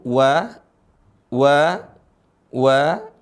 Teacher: dimonyongin dulu wa wa wa karena berasal dari dua bibir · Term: huruf wau